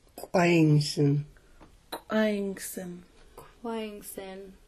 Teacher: and an apostrophe is an ejective k with a raised w it sounds just the same as a k with a w but it's ejected out of the mouth with a strong pop